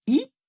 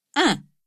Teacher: Même mouvement entre I et un. Lèvres tirées, bouche presque fermée, langue en avant pour l'un comme pour l'autre, mais le voile du palais qui s'abaisse quand on passe à la nasale. Et dans le son un, on sent aussi qu'il se passe quelque chose dans le fond de la cavité buccale pour dévier l'air vers le nez.